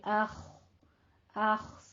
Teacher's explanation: منہ بھر کے حمزہ کو نہیں پڑھنا. حمزہ باریک اٹھائیں گے اور خو کو پر بیچ میں کریں گے